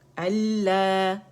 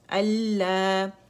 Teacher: مد طبیعی حرکتین دو کاؤنٹ کے لیے آواز اوپر جائے گی